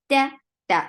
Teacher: Ta is very sharp sound. Fatha, open your jaws. The sound is very short. Again, very uncomfortable sound should be there in your throat.